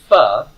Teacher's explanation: Your lips are involved, but in the way we're pronouncing it, we're also getting the bottom teeth involved